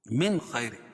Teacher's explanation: اظہار حلقی کیونکہ نون ساکن کے بعد حروف حلقی کے 6 حرفوں میں سے خا ہے · بعد حروف حلقی کے 6 حرفوں میں سے خا ہے اور را باریک پڑھی جائے گی کیونکہ را کے نیچے 2 زیر کی تنوین ہے